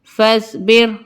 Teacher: یہاں را ساکنہ سے پہلے زیر ہے تو اس لیے یہاں پہ را کو باریک پڑھیں گے